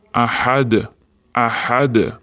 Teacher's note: Agar tajvidsiz Qur'on bo'lsa, da harfi sukunlik kelgan holatida qalqala, ya'ni tebratib o'qiladi. Ahad demasdan ahad, ahad.